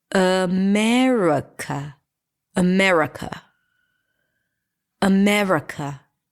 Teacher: So there is no ah in America and there is definitely no e in America. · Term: reduced